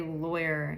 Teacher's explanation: In the West Coast and a lot of General American, loy, as if it's L-O-Y